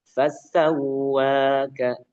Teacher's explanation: Wawunya ditekan. Kenapa ditekan? Karena tasydid, ya kan?